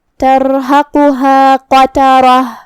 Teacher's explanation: ہمیں اسے بھاری آواز میں پڑھنا ہے. آخری میں تا مدورہ پہ رکیں گے تو اس پہ ہا سے رکیں گے · قاف حروف التفخیم میں سے بھی ہے تو ہمیں اسے بھاری آواز میں ادا کرنا ہے. جو کہ اس پہ پیش ہے تو اس کا دھیان رہے.